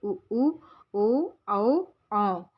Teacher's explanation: वृत्ताकार स्वर ऐसे स्वर हैं जिनके उच्चारण में होठों का आकार गोल हो जाता है, जैसे उ, ओ, औ।